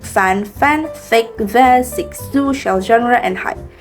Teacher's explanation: The air is forced through a narrow constriction formed by two articulators that come very close to each other. This narrow passage causes noisy turbulence, which results in a hissing or friction-like sound. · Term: Fricative sounds